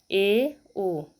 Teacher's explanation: अर्ध संवृत इसमें आधा बंद होता है